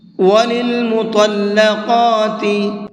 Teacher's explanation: طا کو منہ بھر کے پڑھیں گے اور قاف کو بھی منہ بھر کے پڑھیں گے